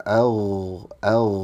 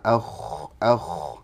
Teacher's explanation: Gin sama ko itu satu makhraj yaitu ujung tenggorokan atau adnal halq